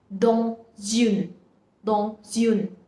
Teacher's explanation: Because whenever a word is followed by a vowel, a consonant is followed by a vowel in the next word, then we combine both of them and then we pronounce them together